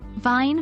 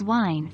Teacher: Pay attention to the placement of your lips. For the V sound, your top front teeth should touch your bottom lip, while for the W sound, your lips should be rounded.